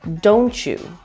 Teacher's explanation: the TY combination in don't you has a ch sound, so it sounds like don't you.